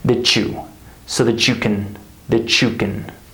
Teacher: What do we have? A CH sound. This is reduction, right?